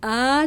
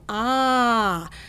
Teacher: we get a kid's jaw to drop and it moves from an uh to an ah